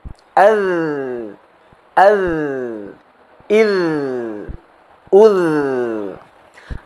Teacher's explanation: huruf dhal harus diucapkan sambil menggetarkan pita suara kita. Sehingga ketika kita mengucapkan huruf dhal, ada getaran yang kuat di pita suara kita.